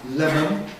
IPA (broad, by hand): ˈlemən